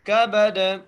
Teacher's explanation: کاف کو بغیر کھینچے، با کو بغیر کھینچے اور دال پر قلقلہ کریں گے وقف کی صورت میں